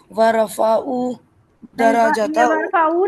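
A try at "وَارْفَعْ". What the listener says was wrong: नहीं है ये हन पर ना जजम का निशान बना हुआ है वरफा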